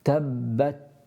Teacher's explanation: you should feel a little burst of air onto the back of your hand after you recite the ta